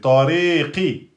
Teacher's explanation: on n'emphatise pas trop le qaf, c'est pas comme pour les autres